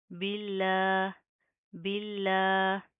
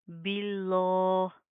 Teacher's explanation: यहाँ पर लफ्ज़ अल्लाह का क्या रूल है कि लफ्ज़ अल्लाह से पहले ज़ेर है, तो यहाँ पर हम लफ्ज़ अल्लाह को बारीक पतला पढ़ेंगे, यहाँ पर हमने मोटा नहीं पढ़ना